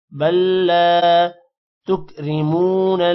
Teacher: را موٹا نہیں ہوگا میم کے بعد واو ہے تھوڑا سا لمبا کریں گے